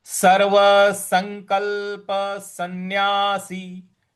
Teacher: जो दूसरा सन्यासी वाला जो स है उसमें अनुस्वार का न में उच्चारण करना है